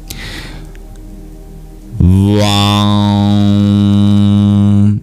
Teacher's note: You don't even have to touch your lips to make that sound. You just bring the resonance into your nasal cavity. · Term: anuswara